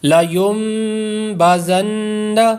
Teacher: دو جگہ پر یہاں پر غنہ ہو رہا ہے، ایک تو اقلاب کا، دوسرا نون مشدد کا